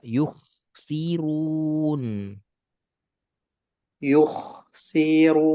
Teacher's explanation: stabil dua harakat ru tebal run jangan ruon